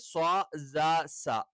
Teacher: സ്വ എന്നുള്ള ഉച്ചാരണം നാവിന്റെ കൂർത്ത അറ്റം രണ്ടു വരി മുൻപല്ലുകൾക്കിടയിൽ വെച്ചിട്ടാണ്